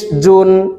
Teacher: জিমের মাখরাজ জিহ্বার মধ্যখান থেকে। জিম দুই পেশ জুন।